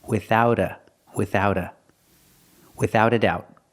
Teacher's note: we hear the T in without sounds like a fast D